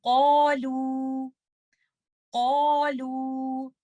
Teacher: آپ الف مد کو تب تک ہیوی ہی رکھیں گے جب تک آپ لیٹر لام پر نہیں پہنچ جاتے